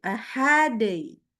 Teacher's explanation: kita harus mengecilkan volume suaranya dan bunyinya menjadi i ya atau y, hadai. Ya, kecil suaranya.